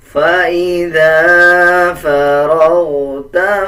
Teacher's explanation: ذال کے اوپر زبر ہے اور زبر کے بعد الف آ رہا ہے، 1 سیکنڈ لمبا کیا جائے گا۔ اسی طرح دیکھیں فا کے بعد را ہے اور را کے اوپر زبر ہے، جب را کے اوپر زبر اور پیش آ جائے تب را کو پر یعنی موٹا کر کے پڑھا جاتا ہے۔